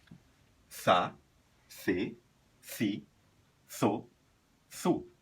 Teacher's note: com a pronúncia língua entre os dentes